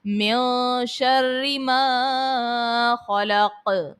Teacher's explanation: خلق میں خو کو پر پڑھیں گے، موٹا پڑھیں گے، حرف مستعلیہ ہے، اور قوف میں پھر وہی بات آ گئی ہے کہ حرف قلقلہ کو جب ساکن کرتے ہیں تو قلقلہ کو خوب ظاہر کر کے ادا کرتے ہیں۔